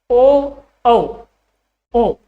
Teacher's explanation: ओ का उच्चारण पीछे से हुआ और औ का उच्चारण भी आपका पीछे से हुआ